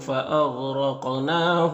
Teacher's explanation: یہاں پر غین بھی حروف مستعلیہ میں سے پر پڑھیں گے، را کو اوپر زبر اور را کو پر پڑھیں گے. قاف حروف مستعلیہ میں سے پر پڑھیں گے اور قاف حروف قلقلہ میں سے بھی ہے اور اس کے اوپر جزم ہے تو قاف میں قلقلہ بھی ہوگا. نون میں کھڑا زبر ہے، ایک الف کے برابر کھینچیں گے.